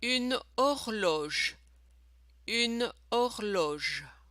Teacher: Now you notice we don't pronounce the letter H in French. So just ignore it.